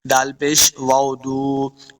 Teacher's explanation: واو مدہ ہے، اس کو دو حرکات لمع کریں گے